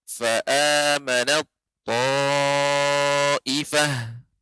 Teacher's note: Ya, di sini ada ta yang sukun bertemu dengan ta, maka huruf ta dilebur ke huruf ta.